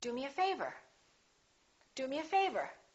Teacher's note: do is important but favor gets more stress because it comes at the end